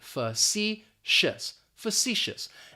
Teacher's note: That first syllable is going to have that schwa, that fa, and we're just basically going to pronounce the letter C, facetious, facetious.